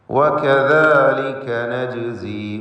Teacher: വകദാലിക നജ്സി എന്ന പദത്തിലെ ജീമിൻ്റെ സുക്കൂനിനെ ഖൽഖല സുഗ്റ നൽകി ശബ്ദം ഹറക്കത്ത് പോലെ ചലിപ്പിക്കണം.